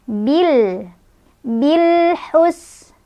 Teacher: Bil hus. Sinnya ada angin, hamas ya, punya sifat hamas, dan ada desisan, punya sifat shafir ya